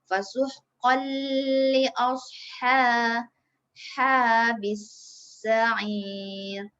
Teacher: Kita masukkan nun tanwin ni ke dalam huruf lam. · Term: idgham bila guna